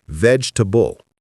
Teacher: The middle e disappears completely. We don't say veg e table. We say vegetable. It's fast, compressed, efficient. · Vegetable. The middle vowel vanishes. You can also think of it as vegetable, almost.